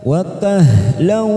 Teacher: lam fathah tanwin bertemu dengan waw, namanya idgham bi gunnah, kita tekan 3 ketuk, siap masuk pada huruf waw